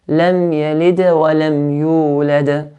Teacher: the qalqala that is forced sukoon at the end will be stronger than the qalqala that has an original sukoon in the middle of an ayah